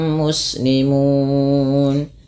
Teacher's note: cara bacanya kita boleh memanjangkan dua harakat boleh empat boleh pula enam tapi kita ngambil yang tengah-tengah saja yang itu yang empat harakat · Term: Mad Arid